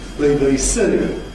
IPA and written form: ˈbə̯i bə̯i ˈsə̯i (BBC)